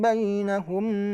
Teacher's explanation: mim sukun ketemu ba itu Ikhfa Syafawi namanya dibaca dengan dengung